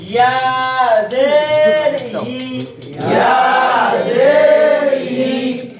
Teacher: জিহ্বার মধ্যখান উপরে তালুর সঙ্গে হালকা ঘর্ষণ লাগবে আর মাঝখান দিয়ে হাওয়া বের হবে